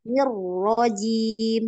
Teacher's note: Ro-nya yang ditekan, yang ada tasydid.